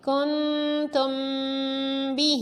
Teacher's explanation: میم ساکن کے بعد با ہے تو اخفاء شفوی ہے، اس لیے میم ساکن کی آواز میں بھی غنہ کریں گے۔